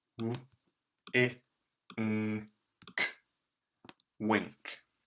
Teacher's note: Wink. You can hear that this N sounds very much like an NG, a ng. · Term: ng sound